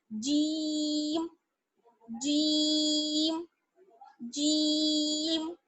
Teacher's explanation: تو جیم باریک آواز اس کی نکلتی ہے، اور اس کو پڑھنے کے لیے جو ہماری زبان ہے، زبان کا جو بیچ والا حصہ ہے ہمارا، ٹھیک ہے، زبان کا جو بیچ والا حصہ ہے وہ ہم اوپر کے تالو پر لگائیں گے